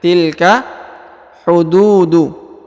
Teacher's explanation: Huruf du dipanjangkan 2 harokat karena di depannya terdapat waw sukun ya.